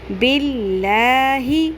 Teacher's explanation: یہاں پر اللہ کے لام کو آپ نے پر نہیں کرنا